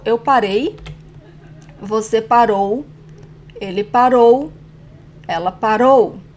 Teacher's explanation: So past tense is different for the stressed syllable. In the singular persons, like eu, it's the last syllable.